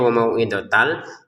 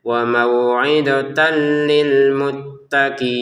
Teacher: Ada lam di depannya, masukin tanwinnya ke lam sehingga cara bacanya wa mau'idatal, dan masukin tanpa dengungan